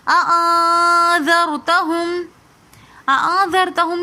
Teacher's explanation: نون ساکن کے بعد اخفا کے 15 حروفوں میں سے ذال آ رہا ہے تو اس لیے ہم نے یہاں پر غنہ کیا